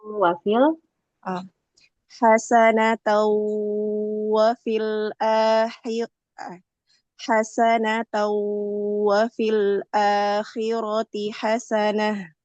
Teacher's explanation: gunanya panjangin lagi hasan dan masukin ee suara ke hidung juga ya. Itulah yang membuat dia gunah.